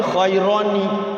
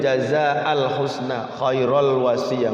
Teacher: Hamzah wasol itu ketika diwasol maka tanwinnya hilang, timbul nun kecil.